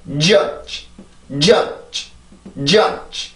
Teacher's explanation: 지금 어쨌든 공기의 힘으로 내가 이 소리를 만들어야 되니까 내가 치조를 막을 때 새로운 공기를 꺼내는 게 아니라 그냥 지금 내가 입안에 남아있는 공기만 이용해서 이렇게 부드럽게 소리를 끝내는 거죠. 그래서 이 정도로만 소리를 내면 돼요.